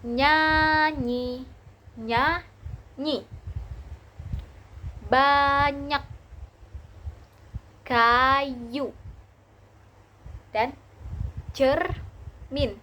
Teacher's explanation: lidah tengah menyentuh langit-langit keras